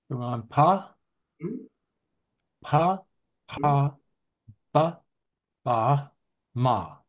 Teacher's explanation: labial with p, like both the lips are coming together